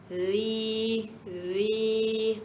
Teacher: Huruf zal ni huruf kena keluar lidah. Jadi jom kita keluarkan lidah sama-sama. Hujung lidah kita letak di bawah gigi kacip atas. Zi zi. Ah bunyi dia akan lain dengan bunyi zat.